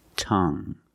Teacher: you have only the nasal sound there's no G it's just a sound um tongue this is my tongue tongue